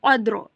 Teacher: we have to read ra sakin heavily